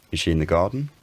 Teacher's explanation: the pitch stays the same until we hit the first syllable of the word garden which is the last stressed syllable · the american intonation pattern by default starts to raise in pitch on the last stressed syllable of the sentence and it raises until the end of the sentence